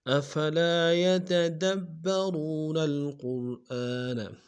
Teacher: قاف کو موٹا ادا کرتے ہیں، را کے سامنے لائیں گے، را کو موٹا ادا کریں گے · افلا میں لام کے ساتھ الف مدہ ہے، دال میں کھینچیں گے۔ یتدبرون میں دال کو با کے سامنے لائیں گے، شد زور دیں گے، را کو واو کے سامنے لائیں گے، واو مدہ ایک دال میں کھینچیں گے۔